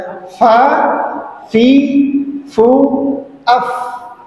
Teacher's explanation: Ada angin yang keluar ketika fa itu diucapkan.